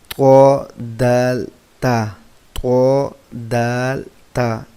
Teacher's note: یہ دانتوں پر زبان لگانے سے نکلتے ہیں